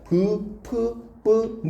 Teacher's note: 그러니까 브, 프, 뿌, 무 하면 양 입술을 붙이잖아요. 그래서 양순음인 거예요.